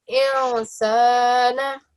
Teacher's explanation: we make sure that whenever we say this noon, that we hide it or give it a slight nasal sound. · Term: noon sakin